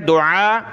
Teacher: عین نکالیں گلے سے، اس کو کھینچنا ہے